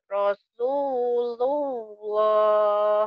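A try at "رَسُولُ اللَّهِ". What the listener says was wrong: Rasulullah. Lamnya kurang tebal. Ya, kurang penebalan di huruf lafaz apa di lafaz Allah ya. Rasulullah.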